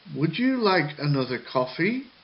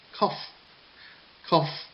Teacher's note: So, if you notice on the word coffee, the first syllable for coffee goes up, cough, cough. And then the second syllable, fee, goes down. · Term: rise and fall intonation